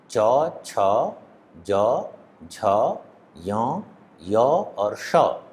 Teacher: ये तालु से उच्चरित होने वाले वर्ण हैं, इसलिए इनको तालव्य वर्ण कहते हैं